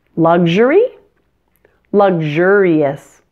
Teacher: The word luxury stresses the first syllable, luxury, but luxurious stresses the second syllable, luxurious.